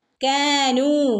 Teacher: കാനു ഇവിടെ രണ്ടനക്ക് നീട്ടി കൊടുക്കുക